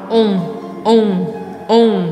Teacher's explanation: O O é bem redondinho e é isso que você vai fazer. Vai fazer boca bem redondinha e anasalar no final.